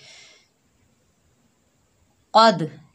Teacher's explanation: क़ाफ के ऊपर ज़बर है, आगे दाल साकिन है, क़ाफ को दाल साकिना से मिलाएंगे, क़ाफ हरूफ़ इस्ताला में से मोटा पढ़ेंगे, दाल जो है हरूफ़ कलकला के 5 हरूफ़ों में से आ रहा है साकिन हालत में, तो यहाँ पर कलकला होगा, दाल की 2 मरतबा आवाज़ आएगी, यानी डबल साउंड आएगा